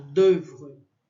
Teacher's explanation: esse O e U é só um E bem fechado